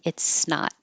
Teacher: hold the t because you won't hear the T